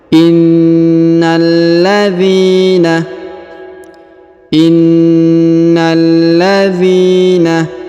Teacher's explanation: Huruf dhi dipanjangkan 2 harokat karena di depannya terdapat ya sukun